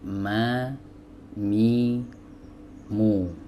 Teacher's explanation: Baik, huruf mim sebagaimana sudah diketahui ya, dia keluar dari dua bibir ya. Bibir atas dipertemukan dengan bibir bawah ya.